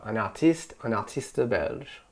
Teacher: we're accentuating that last syllable, belge. It's a little bit longer